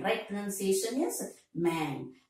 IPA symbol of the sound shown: mən